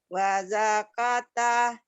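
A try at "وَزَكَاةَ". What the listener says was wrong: Kanya panjang.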